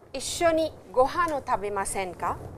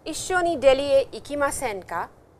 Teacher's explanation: if you put this ka with a rising intonation, it has a meaning which is used as a polite invitation